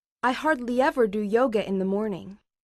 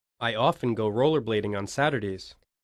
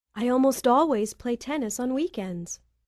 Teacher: stress part a listen to the syllables stressed in each sentence notice that the adverbs of frequency are stressed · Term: sentence stress